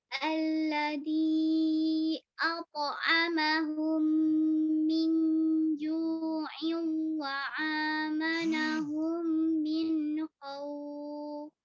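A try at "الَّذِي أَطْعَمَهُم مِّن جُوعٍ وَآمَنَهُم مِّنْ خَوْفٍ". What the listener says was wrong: ya, kemudian bagian wa amanahum a ya, bukan ain. Wa amanahum min khauf. A atau ain, gitu ya. Harus jelas nggih.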